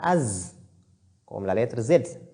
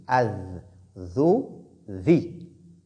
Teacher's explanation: Zal sort de l'extrémité de la langue en s'appuyant sur l'extrémité des incisives supérieures. On dit Az.